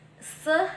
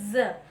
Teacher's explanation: the difference between the sound s and z lies in voicing. S is voiceless, z is poised.